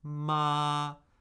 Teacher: second tone starting at the medium end at a normal speaking pitch and steadily rising